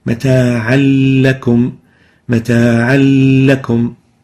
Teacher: Mata'an, tanween with fatha, and the lam following it with fatha. Those, when merged together, would sound like mata'an lakum, mata'an lakum, as if there is no tanween. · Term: idgham